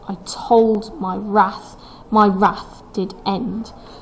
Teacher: the second line is iambic tetrameter, which means that the stress comes on the second syllable in the foot.